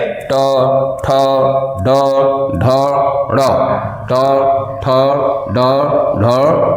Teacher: आप बोल के देखेंगे, जीभ हल्का सा पीछे जाती है, हल्का सा आगे का भाग कई जगहों मुड़ता, पीछे की ओर मुड़ता है, और इस तरीके से ठोकर मारते हुए निकलता है। जीभ का जो मूल है वहां पे दबाव बनता है, और वहां के ठोकर से इन वर्णों का उच्चारण होता है, इसलिए इन वर्णों का उच्चारण स्थान मूर्धा माना गया है। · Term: टा वर्ग